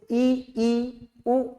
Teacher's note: संवृत बोलेंगे तो ई, ऊ, पूरा मुख क्या होता है, जकड़ जाता है